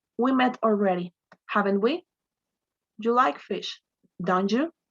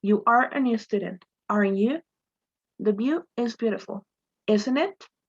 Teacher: all of these tag questions are required to use rising intonation to ask them